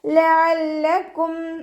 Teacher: മഖ്റജ് വസത്തുൽ ഹൽക്ക്, തൊണ്ടയുടെ മധ്യഭാഗം, സൗണ്ട് ഹംസയെ പോവാതെ ശ്രദ്ധിക്കുക.